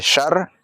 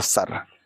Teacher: एक तालव्य श और एक दंत्य स